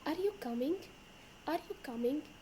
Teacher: And in yes or no question, your intonation rises at the end.